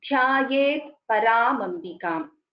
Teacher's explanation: And when we are pronouncing the Samyuktakshara, like for example in the case of Dhyaye, there is a dhakara and there is a yakara. Dha, mahaprana dha and yakara, both should be heard clearly. Dhyaye paramambikam.